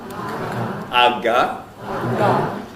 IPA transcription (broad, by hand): ɑgɑ